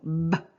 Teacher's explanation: the lips come together and you hear that complete closure, right, of the vocal tract when the lips come together and the airflow ceases. So b, so I'm stopping the flow of air, which is why it's called a stop consonant.